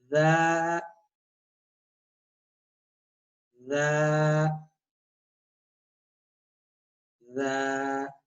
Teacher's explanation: जा में ऊपर वाले दांत नीचे वाले दांत आपस के अंदर करीब होंगे। ठीक है, और जुबान की नोक भी इनके करीब होगी।